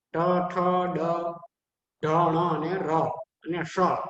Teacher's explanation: મૂર્ધન્યમાં ટ, ઠ, ડ, ઢ, ણ અને ર અને શ. આ સાતનું સ્થાન છે મૂર્ધા, એટલે કે મૂર્ધન્ય.